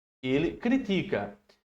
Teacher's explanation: É o ti a sílaba forte aí